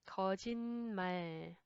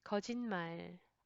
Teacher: 받침 sound changes to another nasal sound.